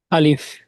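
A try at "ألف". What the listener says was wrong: আলিফ। আর একটু টান, স্ট্যান্ডার্ড হবে, উচ্চারণ স্পষ্ট হবে। আলিফ।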